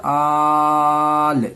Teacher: اس کو 5 الف کے برابر کھینچیں گے، یعنی 4 سے 5 سیکنڈ تک اس کو کھینچنا ہے، رکنا ہے. آل، حمزہ کھڑا زبر آ، اس کو 1 الف کے برابر کھینچیں. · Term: مد لازم